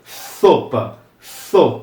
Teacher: É como se fosse um intermediário entre um som de um T, um som de um S e isso que a gente faz com a língua entre os dentes